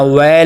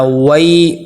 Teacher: یائلین کو نرمی سے ادا کرنا ہے، معروف پڑھنا ہے، مجہول نہیں پڑھنا، ویل نہیں پڑھنا، وئی۔